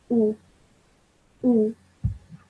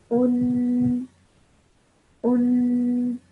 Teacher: that ghunna sound at the end, I stretch for 2 seconds · when you pronounce it, you must take care to pronounce a 2-second ghunna sound